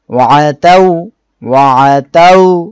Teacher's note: তা ওয়াও জবর তাও, ওয়া তাও, ওয়া তাও। এখানে ওয়াও সাকিন ডাইনে জবর, লিনের হরফ। এক আলিফ টানতে হবে।